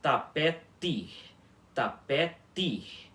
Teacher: a letra T na língua baorana sempre vai ter um som de t, um t mesmo sem chiado